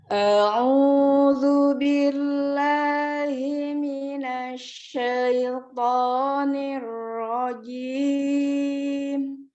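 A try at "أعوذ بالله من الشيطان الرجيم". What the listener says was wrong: Ya, masih ke bawah lagu ya. Ya, masih ke bawah lagu, zalnya tuh secara makhrajnya itu belum kena ya. Jadi huruf zalnya masih ada kesalahan dibacanya zu. Tapi zal makhrajnya ujung lidah bertemu dengan ujung gigi seri atas zu, a'udzu gitu ya. Alif a, ainnya u, a'udzu billah tidak jangan dikebawahin lagi ainnya.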